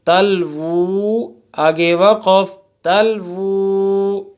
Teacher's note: تھوڑا لمبا کر کے وقفی عارضی مد یہاں ہوگی